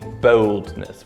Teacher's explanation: 50 years ago in England it would be boldness with a full o sound before that l